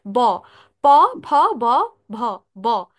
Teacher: দুই ঠোঁট একসাথে বন্ধ থেকে তারপর উচ্চারণের সময় দুই ঠোঁট একসাথে খুলে যায় এবং বাতাসটা সজরে বের হয় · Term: বর্গীয় ব